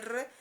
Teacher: si nosotros queremos decir R, la lengua se dobla y se va hacia el paladar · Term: R múltiple o vibrante